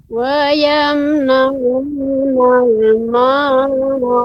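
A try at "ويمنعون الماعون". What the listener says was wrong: Ya, huruf ain ya. Ketika pengucapannya dia harus lebih lembut lagi.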